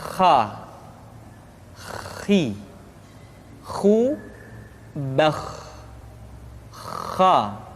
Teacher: Atau lebih praktisnya, pengucapan huruf kha persis terdengar seperti orang yang tidur dalam keadaan mengorok